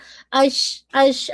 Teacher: شین کے اندر تفشی ہے نا، تو زبان پھیلتی بھی ہے اور ہمس بھی ہے، ہمس کا مطلب ہے آپ کی ایئر بلو ہو رہی ہے، شا اش، آپ کو خود فیل ہوگا اگر آپ اپنے ہینڈ کو اپنے قریب لے کر آئیں گے نا تو آپ کو خود فیل ہوگا ایسا۔